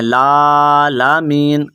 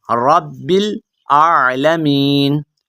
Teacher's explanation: وہ لام کو اگلی لام کے ساتھ ملا دیتے ہیں، لالمین، لالمین نہیں ہے، رب العالمین۔